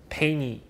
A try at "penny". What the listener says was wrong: Penny, penny, not pay, penny.